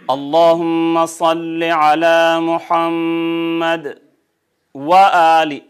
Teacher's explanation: سانس نہیں ٹوٹا، آواز ٹوٹی، سانس نہیں ٹوٹا. یہ سکتہ ہے